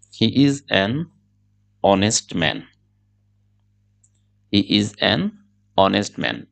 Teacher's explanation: ইংরেজিতে এরকম কিছু শব্দ আছে যেই শব্দের প্রথম বর্ণটি এইচ, কিন্তু নেটিভ স্পিকাররা এইচ উচ্চারণ করেন না